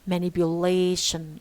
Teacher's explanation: man loses part of its strength and it carries secondary stress